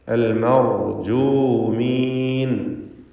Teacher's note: റായിന് ഒരു വിറയൽ വരാതെ ശ്രദ്ധിക്കണം. ഒറ്റ തഫ്ഖീം ചെയ്യപ്പെടുന്ന റാ മാത്രം ഉച്ചരിക്കുക.